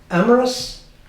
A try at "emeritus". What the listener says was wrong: It sounds like amorous when you say it that way. Emeritus.